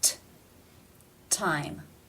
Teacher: It's at the beginning of the word, therefore it is pronounced with the real T sound